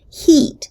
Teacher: least one feature for example the sound e as in heat belongs to the class of high vowels the class of front vowels and the class of tense vowels